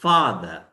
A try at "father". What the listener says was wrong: Further না. করতে হবে একটু বড় করে. Father.